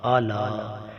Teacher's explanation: لام کے اوپر مد ہے، 4 الف کے برابر کھینچا جائے گا